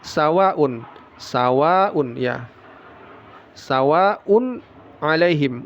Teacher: wa panjangnya 4 sampai 5 harakat ini adalah mad wajib muttasil ya